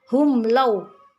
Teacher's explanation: Tidak ada dengung, bacanya jelas